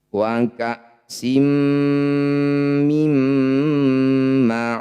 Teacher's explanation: Cara bacanya bunyi nun masukkan pada mim, dengungkan 2 harokat. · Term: idgham bi gunnah